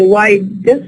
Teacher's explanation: you are producing the da as an alveolar da